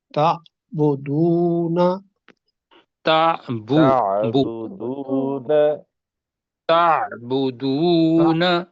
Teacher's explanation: لفظ تعبدون، اس میں جی عین جو حلق سے نکالنا ہے جی، جی اور واو کے اوپر شاید اس کو 2 حرف کے 2 حرکات کے برابر پڑھنا ہے.